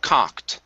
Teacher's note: instead of cooked it's gonna be an ah sound here